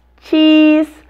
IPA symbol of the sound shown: i